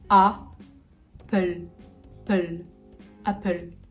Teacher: A. Très ouvert. Vraiment le A français. Hein. Apple.